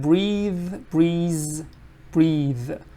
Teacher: you have to just add voicing like at the back of your throat you add voicing